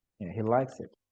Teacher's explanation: The pronoun he or she is not stressed, and like is new information because he may not like it, but he likes it.